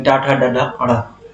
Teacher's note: हमारे मूर्धन्य हो जाएंगे। मूर्धन्य यानी जिनका उच्चारण हम मसूड़ों की सहायता से करते हैं